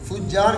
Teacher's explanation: فجار میں امالہ دونوں راویوں کے لیے ہے